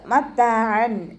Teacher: തെൻവീനിന് ശേഷം ഇവഹാറിൻ്റെ ലെറ്ററായിട്ടുള്ള ഹംസ വന്നു. തെൻവീനിലുള്ള നൂനിൻ്റെ സൗണ്ടിനെ വ്യക്തമാക്കി മണിക്കാതെ ഓതുക